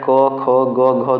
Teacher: आगे देखिए जो कंठ का उच्चारण होता है ये कंठ यानी गले से होता है, इसलिए उन्हें कंठ ध्वनियाँ कही जाती हैं